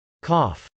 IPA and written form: kˈɑf (cough)